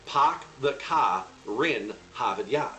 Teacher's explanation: if a word ends with the letter R but the next word starts with a vowel you shift the r from the end of that word to the start of the next one